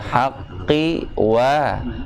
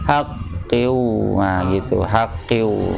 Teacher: yang saya maksud bunyinya jangan dipanjangkan bunyinya, tapi haqqi berhenti ya, haqqi wa, tapi memang harus latihan, kalau enggak nanti jadi haqqiu, nah gitu, haqqiu.